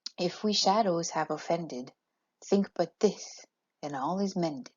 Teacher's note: used in this a trochee is another type of poetic foot it's a stress syllable followed by an unstressed syllable